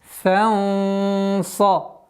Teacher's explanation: С фатхи над буквой фа мы уходим на ихфа, твердый ихфа. В размере двух огласовок удерживаем. Фанса. И ба у нас мягкий звук, но с правилом калкаля.